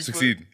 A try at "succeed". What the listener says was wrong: you're just saying it fast. You're just saying it fast.